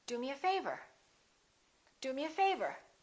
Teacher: do is important but favor gets more stress because it comes at the end